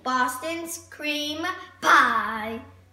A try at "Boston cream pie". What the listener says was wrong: Not Boston's, man, that's possessive. Boston cream pie.